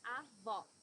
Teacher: It should be an open O, as we say in Portuguese.